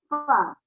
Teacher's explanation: Jadi, huruf yang harus keluar nafas namanya sifat alham.